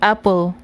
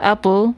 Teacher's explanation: And when you say apple, it's pronounced as apple, which means that there doesn't seem to be any schwa if you say it quick enough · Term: syllabic